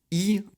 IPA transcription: iː